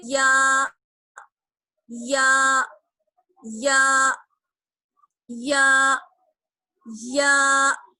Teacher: تو اسی طریقے سے ہم ادا کریں گے یا یا یا یا یا. زبان کا بیچ والا حصہ اور اوپر کے تالو. ٹھیک ہے؟